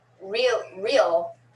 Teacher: because of the l it kind of has a diphthong effect